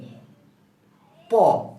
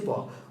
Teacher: ফুসফুস তাড়িত বায়ু প্রথমে আটকে যায়, বাধাপ্রাপ্ত হয়ে আটকে যায়, বন্ধ হয়ে যায় এবং তারপর বেরিয়ে যায়। এবং যখন এই যে আটকে যায়, এই আটকে যাওয়ার কারণ হলো আমাদের বাক প্রত্যঙ্গ একটির সাথে অন্যটি টাচ লাগে, স্পর্শ লাগে বা ছোঁয়া লাগে। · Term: স্পৃষ্ট ব্যঞ্জন